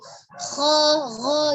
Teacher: Kalau misalnya kita pengucapan bunyi seperti ho, jadi ada pergetaran ya, ada getaran di tenggorokan bagian atas